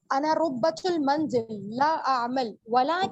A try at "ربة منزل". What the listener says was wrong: ربة نہیں ہوتا, ربة ہوتا, را کو زبر دیں بولنے میں. أنا ربة, ربة نہیں, ربة منزل.